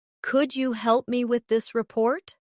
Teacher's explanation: Pay attention to the stress. The words help and report carry more weight in the sentence.